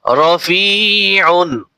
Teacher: রা, ফা ইয়াজের ফি, রাফি, আইন দুই পেশ উন, রাফিউন, আউন, আইন গলার ভিতরে একটু চাপিয়ে বলতে হবে